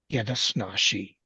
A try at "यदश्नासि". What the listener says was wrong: The last syllable is sa. Okay, as if letter C, alphabet C. Okay, so yadashnasi.